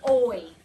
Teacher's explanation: my mouth has two mouth placements okay my mouth Glides but it's one sound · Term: diphthong